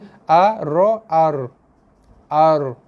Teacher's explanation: Ra bila mati memang ada vibration, getar. Cuma getaran dia itu dipanggil sifat takrir. · Ra, hujung lidah sentuh langit depan.